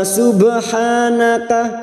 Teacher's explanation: ba sukun yang mati asli di tengah kalimat qalqala sugro. Subhanaka ha alif kecil di atas 2 harokat kita panjangkan mat tabi'i.